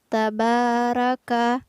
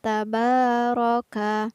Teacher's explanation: pada lafaz tabaroka ada huruf ro yang berbaris fathah maka harus dibaca tebal jadi kurang tepat jika kita membacanya tabaraka tapi yang benar adalah